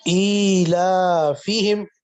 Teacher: دونوں پہلے والے حرف لمبے کریں گے، کھینچ کر پڑھیں گے، اور باقی آگے کو بغیر کھینچے ادا کریں گے